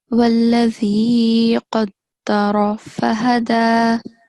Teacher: The ra with fatha stroke, again, it is going to have a thick sound